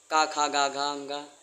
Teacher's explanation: कंठ वर्ण हैं, कंठ से बोले जाते हैं · का वर्ग का उच्चारण स्थान कंठ हो जाएगा